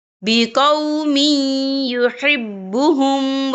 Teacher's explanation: منکم عن دینہ فسوف یأتی اللہ بقوم یحبہم، یہ دیکھیں بقومی، یہاں میم کے نیچے تنوین ہے، تنوین کے بعد جو ہے یا آ رہا ہے اور یا جو ہے حروف یرملون میں سے ہے، تو یہاں پر ادغام ہوگا، تو ہم اسے تھوڑا سا غنّے کے ساتھ پڑھیں گے۔